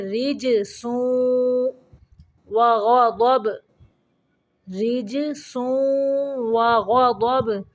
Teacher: جیم کو قلقلہ کریں گے، را کو باریک پڑھیں گے